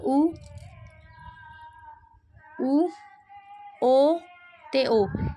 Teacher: ਗੋਲਾਈਦਾਰ ਹੁੰਦਾ ਜਦੋਂ ਆਪਾਂ ਬੋਲਦੇ ਸਮੇਂ ਆਪਣੇ ਬੁੱਲਾਂ ਦੀ ਸਥਿਤੀ ਗੋਲ ਹੋ ਜਾਂਦੀ ਹੈ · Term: ਗੋਲਾਈਦਾਰ ਸਵਰ